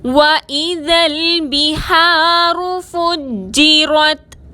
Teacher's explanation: جیم مشدد کو مضبوطی اور دباؤ کے ساتھ ادا کریں گے، را کو تا سے ملائیں گے۔